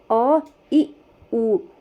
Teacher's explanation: इनके उच्चारण में बहुत कम समय लगता है, सबसे कम समय लगता है, एक मात्रा का समय लगता है, इसलिए इन्हें ह्रस्व स्वर कहा जाता है।